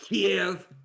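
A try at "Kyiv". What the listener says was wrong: No, you said Kiev like Kevin.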